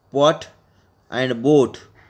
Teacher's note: The initial sounds in the English words pot and boat, for example, are made by the first closing the lips together and then releasing the closure abruptly